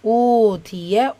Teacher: வாவ் மத்தா இரண்டு ஹரக்கத் அளவு நீட்டம் கொடுத்து ஓதணும்